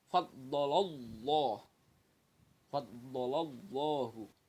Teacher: Jadi lafaz Allah itu disebutnya lam jalalah yang didahului oleh huruf berharokat fathah atau doma, maka harus dibaca tafkhim, tebal atau berat